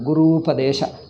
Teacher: U plus U becomes one long U. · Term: Dirgha Sandhi